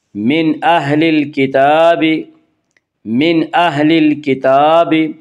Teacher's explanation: تا کے اوپر کھڑا زبر ہے، کھڑا زبر کو ایک الف کے برابر کھینچ کر پڑھیں گے۔ من اہل الکتاب والمشرکین، الف لام اگر حروف قمری کے شروع میں ہوں تو صرف لام پڑھا جائے گا، الف کو نہ پڑھیں گے۔